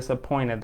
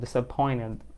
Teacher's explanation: بندروب t هنا عشان قبلها n فتسهيلة للنطق، فبنقول disappointed على طول. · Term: drop t